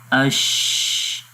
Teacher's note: شین میں زبان اور تالو آپس میں مل نہیں رہے، حالانکہ اس کا مخرج یہی ہے کہ جب زبان، وسط زبان یعنی زبان کا درمیان والا حصہ جب تالو کے درمیان والے حصے پہ لگتا ہے تو اس وقت شین ادا ہوتا ہے۔ · تو اگر ہم یہاں پر اس امیج میں دیکھیں تو یہاں پر زبان کا درمیان والا حصہ تالو کے درمیان والے حصے پہ نہیں لگ رہا، البتہ اس کے قریب تر ہے، تھوڑا سا یہ گیپ ہے کیونکہ اس کے اندر صفت ہمس ہے اور ہمس میں ہوتا یہ ہے کہ سانس جاری رہتا ہے۔ جب سانس جاری رہے گا تو اس کو تھوڑی سی اسپیس مل گئی ہے یہاں پر، جس سے سانس آواز جب ووکل کارڈ سے باہر آتی ہے تو یہ چھوٹی سی جگہ سے باہر نکل جائے گی، جس کو ہم پڑھتے ہیں اش۔